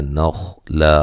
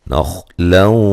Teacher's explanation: نخلا خا کو موٹا ادا کرنا ہے لیکن ہلانا نہیں ہے